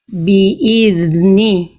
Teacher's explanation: ujung lidah ke ujung gigi atas ngalir